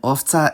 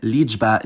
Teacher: the entire cluster in owca is voiceless, and the entire cluster in liczba is voiced